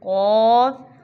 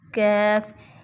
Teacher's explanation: कौफ मोटा, कैफ बरीक